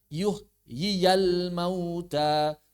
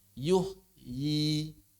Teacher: Sedangkan ya madnya atau ya fathahnya tidak pernah hilang. Makanya saat wasal dibaca yuhyial mauta. Tapi saat waqaf dibaca yuhyi. Otomatis dibaca mad